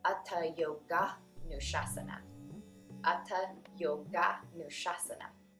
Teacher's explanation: Sometimes when transliterated into English letters, the words yoga and Anushasanam are combined into one word where the A that joins them is made the long sound. So then it would be Atta Yoga Nushasanam.